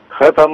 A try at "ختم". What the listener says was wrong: لا الخام فخامة تخين أوي. خاء خاتم.